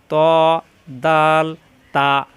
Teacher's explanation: জিহ্বার আগা উপরের দুই দাঁতের ঘোড়ার সঙ্গে লাগাইয়া শক্ত করে উচ্চারণ ত দাল তা প্রত্যেকবার জিহ্বার আগা উপরের দুই দাঁতের গোড়ায় লাগবে